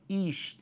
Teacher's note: Esse Shivá aqui não é vocálico, por quê? Primeiro que ele não inicia a palavra, e segundo, ele é precedido por uma vogal breve.